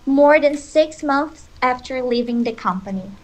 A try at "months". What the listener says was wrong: Yeah, I think you did a F. So aim for a TH, not an F.